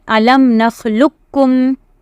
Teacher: directly combine the qaf into the kaf and read only kaf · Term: idgham mutaqariban